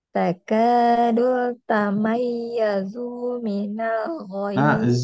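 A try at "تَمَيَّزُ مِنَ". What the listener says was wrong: Zu-nya kepanjang. Zumina, zu, kepanjang.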